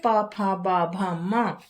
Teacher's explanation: माने इन वर्णों का उच्चारण औष्ठय स्थान से होता है।